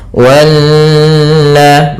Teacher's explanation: Di sini ada bacaan namanya gunnah, yaitu nun yang bertasydid. Cara membacanya menahankan dulu sepanjang 2 harokat sampai 3 harokat. Wanna, baru dilepaskan.